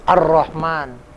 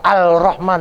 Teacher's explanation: Jadi kalau al-syamsiyah alnya tidak bunyi, tidak terdengar.